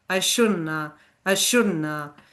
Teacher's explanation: instead of shouldn't have, we just drop the v and it becomes na